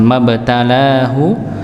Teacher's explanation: la-nya juga panjang 2 harakat dikarenakan alif bertemu dengan fathah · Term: mad tabi'i